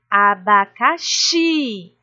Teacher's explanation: Então, xi é a sílaba mais forte e as outras são as sílabas fracas, são as sílabas átonas. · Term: sílaba tônica